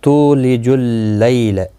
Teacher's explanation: تو واو مدہ ہے، ایک الف کی مقدار کے برابر کھینچ کر پڑھیں گے. لی یالین ہے، تھوڑا نرمی کے ساتھ کھینچ کر ادا کریں گے، لا کو کھینچنا نہیں. · تولج اللیل، تو واو مدہ ہے، ایک الف کی مقدار کے برابر کھینچ کر پڑھیں گے. لی یالین ہے، تھوڑا نرمی کے ساتھ کھینچ کر ادا کریں گے